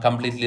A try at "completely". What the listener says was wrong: Again, it's completely. It's completely, it's not completely. So the stress is not enough. Okay, it's mispronounced as completely. Okay, this is wrong. All right, you need to give more stress on this phrase pa, poo. Okay, completely, okay, completely, not completely.